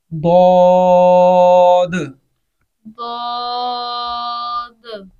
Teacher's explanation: द्वाद के आखिर में दाल है, उस दाल के ऊपर कलकला करेंगे हम